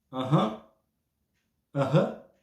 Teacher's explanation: o mesmo som que pode ser entendido e visto no Ain, no Aleph, um som gutural no fundo da garganta, porque guturais são essas palavras que são pronunciadas no fundo da garganta, né?